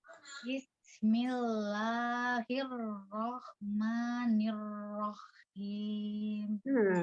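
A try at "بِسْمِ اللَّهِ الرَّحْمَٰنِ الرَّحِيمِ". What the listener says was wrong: Tidak nih rohim. Tidak tasdid huruf kho. Tasdidnya hanya huruf ro. Alirkan sinnya. Bismillahirrahmanirrahim. Rahim, tidak rohim.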